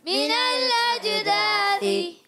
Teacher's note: मिनल अजदासी, मिनल अजदासी, मीम के नीचे ज़ेर, हरकत नहीं खींचेंगे। नून को लाम से मिलाएंगे, लाम को हिलाएंगे नहीं। और अज हमज़ा को जीम से मिलाना है, जीम साकिन है, उर्फ़ कलकला में से।